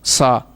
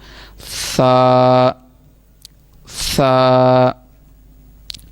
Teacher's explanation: मैंने पिछले भी सबक में बताया था, इसमें सीटी की आवाज़ आपकी पैदा नहीं होनी चाहिए। सा, इसको पढ़ने का जो तरीका है ज़ुबान की नोक और ऊपर के दांतों के अंदरूनी किनारे से। ऊपर वाले जो हमारे दांत हैं उनके अंदरूनी किनारे जो हैं, दोनों दांतों के दरमियान में अगर हमारी आवाज़ ज़ुबान लगेगी तो फिर ही ये सही अदा होगा।